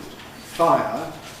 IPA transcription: ˈfaɪ̯.ə